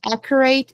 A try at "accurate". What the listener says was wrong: The last syllable is short. Not rate.